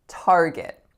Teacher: So 2 syllables. And the strongest is, of course, the first. It's a complex R-colored vowel, R.